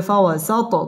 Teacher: ত কলকলার হরফ ধাক্কা দিয়ে পড়তে হবে